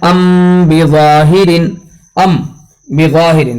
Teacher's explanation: मीम के अंदर इख्फा ज़रूर किया जाएगा बा के पास, पसंदीदा कौल के मुताबिक जो है इख्फा किया जाएगा, चाहे वो मीम का सुकून असली हो या आरजी हो।